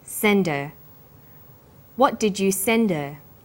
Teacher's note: send her send is the strong form and her is weak because her is not stressed we drop the initial hurt sound